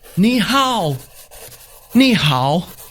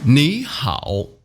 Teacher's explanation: the first one the e has to turn into the second tone